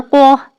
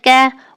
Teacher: قاف میں زبان زیادہ پیچھے جاتی ہے · قاف جو ہے طاقتور اور گہرا، جبکہ کاف نرم اور ہلکا